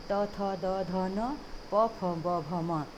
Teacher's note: त वर्ग किससे होता? दंत से होता है। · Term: प वर्ग